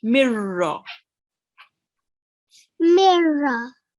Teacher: we can't read the noon sound, the nasal sound, because there is the ra shadda mashaddad and the la mashaddad. So just with these two words, these two letters, okay, ra mushaddad and la mushaddad, we don't read the noon sakin.